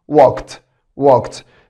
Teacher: اللي بعدها كلمه walk walk، والماضي بتاعها walked walked. ولاحظ برضو بعد الكه ساوند الاي دي بتنطق تا